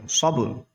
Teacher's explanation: یہاں پر قلقلہ ہوگا کیونکہ حروف قلقلہ میں سے با آ گیا